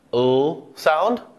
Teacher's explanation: The two other sounds that make it into this category is the l sound, where the tip of the tongue is very clearly touching that alveolar ridge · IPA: /l/